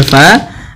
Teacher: mad thabi'i fathah bertemu alif panjangnya dua harakat